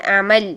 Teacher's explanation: امالا نہیں ہے، عین کو صحیح صدا کیجئے، حلق کے درمیانی حصے سے